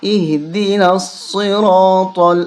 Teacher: نون کو صاد کے ساتھ ملائیں گے، الف لام اور یہ الف یہ تینوں چھوڑ دیں گے